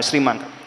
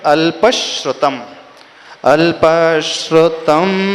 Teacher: तालव्य श और र या शक्कर का श और र मिलकर के श्र बना है